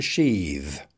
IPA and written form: ʃiːð (to sheathe)